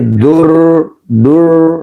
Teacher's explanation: R tafhim berarti rnya tebal kedengarannya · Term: ro tafhim